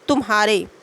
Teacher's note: तुम्हारे के उच्चारण में मा के पश्चात ह पर शीघ्र संक्रमण होता है